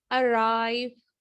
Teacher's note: जब vowel sound हो आर के बाद तो हम आर को बिल्कुल मतलब जोर दे के जो है ना प्रोनाउंस करेंगे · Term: आर साउंड